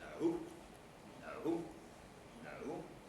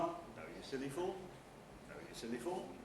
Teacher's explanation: a low rise starting low and rising throughout the nucleus and the tail if there is one